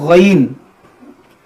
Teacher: ग देखिए इसको गन या गन नहीं पढ़ना है बल्कि इसको पढ़ना है मोटा करके गन गाफ की तरह आवाज इसमें ना निकले